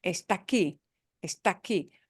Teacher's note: they're both ahs, but the first ah is stressed, meaning it is punched harder. And the next word begins with an ah that is not stressed because we're punching the end on the aquí, aquí.